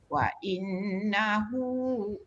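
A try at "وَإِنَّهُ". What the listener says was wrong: sikit lagi dengung Datuk. Wa innahu. Wa in tu dengung.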